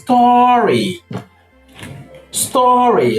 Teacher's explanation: Now, the problem area where people have problem in the pronunciation of this word is in this sound here, this vowel sound after top. It is pronounced as O, the long O sound. That is the half back rounded vowel.